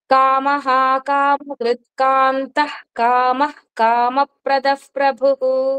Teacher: కామః కామకృత్కాంతః కామః కామప్రదఃప్రభు కాంతః కామః అక్కడ రెండు విసర్గాలు అబ్సర్వ్ చేయండి ఈ రెండు విసర్గలు కూడా కా ముందు వచ్చిన విసర్గలు రెండు కూడా సగం హ పలుకుతాము · కా ముందు వచ్చిన విసర్గలు 2 కూడా సగం హా పలుకుతాము